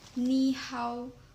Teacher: despite being written with two third tones the first character is pronounced with the second tone